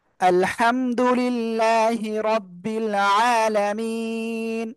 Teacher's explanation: এক আলিফ মাদের পরের হরফে থেমে যাচ্ছি, তাই আমরা তিন আলিফ টেনে পড়বে এক আলিফের জায়গায়।